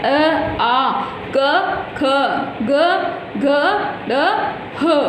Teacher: ये सभी वर्ण कंठ से बोले जाते हैं, अतः इन्हें कंठय कहते हैं